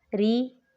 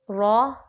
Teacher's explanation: ری باریک پڑھا جائے گا، رو اور رو پر پڑھا جائے گا